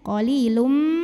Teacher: tanwin dhammah ini masuk atau lebur ke mim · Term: idgham bi gunnah